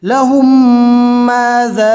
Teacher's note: میم ساکن کے بعد دوسرا میم آ گیا تو ملا کر گنہ کے ساتھ پڑھیں گے. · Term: ادغام شفوی